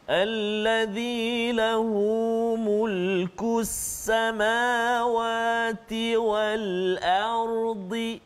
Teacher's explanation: huruf ra yang sukun ataupun mati, sebelum dia hamzah tu baris atas, maka ra dia kena tebal. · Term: tafkhim